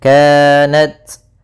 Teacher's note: ta sukun maka harus ada hamasnya